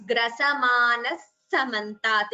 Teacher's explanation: the visarga followed by sa. It becomes grasamanas samantat. Instead of the visarga, you get a s. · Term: visarga sakara sandhi